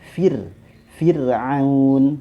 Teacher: kasroh ya dibaca tipis dan itu akan mempengaruhi huruf rhonya · Nah, kembali lagi tadi, ya, ke kaedah umumnya bahwasanya kasroh, ya, dibaca tipis dan itu akan mempengaruhi huruf ro-nya. Maka dibaca Fir'aun, seperti itu.